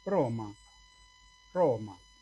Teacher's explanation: Una R vibrante múltiple, pero apenitas.